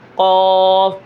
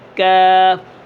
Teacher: جیسے قاف، پیچھے سے تھوڑا سا آگے سے کاف